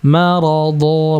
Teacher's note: Di sini marada bukan marado. Ingat huruf tebal tidak dimonyongkan.